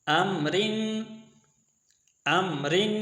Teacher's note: امرن میں را اس کے نیچے زیر ہے تو یہ ہم نے باریک پڑھی